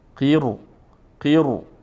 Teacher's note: ما خلاف عادت باریک نمیخونیم پر میخونیم